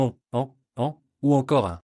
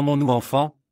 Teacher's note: dans mon ou enfant, l'air passe par le nez, ce qui donne cette sonorité particulière. Ça ne ressemble ni à un N classique, ni à une voyelle standard. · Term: sons nasaux